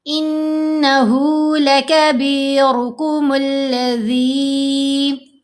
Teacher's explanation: نون پر غنہ، اور ہا کو 2 حرکات کی مقدار لمبا کرنا ہے